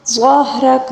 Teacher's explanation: ظا کو بھی پر پڑھیں گے اور را کو بھی پر پڑھیں گے کیونکہ را کے اوپر زبر ہے، ٹھیک ہے۔ اور وقف کے دوران کاف کے اوپر جو زبر ہے اس کو ساکن کے ساتھ پڑھیں گے، ٹھیک ہے۔